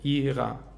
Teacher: Ihrer mit a-schwa am Ende